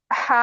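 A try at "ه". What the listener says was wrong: नहीं नहीं, ये हैवी नहीं है, ये हैवी लेटर नहीं है बिल्कुल भी। हमजा, हा। इसमें हम पढ़ते वक्त इसमें कोई आपको भारीपन नजर आ रहा है, हैवीनेस दिख रही है? हा, हमजा नहीं दिख रही है ना? इसमें कोई प्रेशर, कोई हैवीनेस नहीं है, कोई अ, आपको जोर नहीं दिखेगा।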